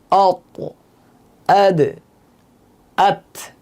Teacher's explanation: 11 নম্বর মাখরাজ দাল থা, জিহ্বার আগা সামনের উপরের 2 দাঁতের গোড়ার সাথে লাগিয়ে উচ্চারিত হয়